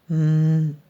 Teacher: O som sai pelo nariz e a nossa boca fica fechada. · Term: letra M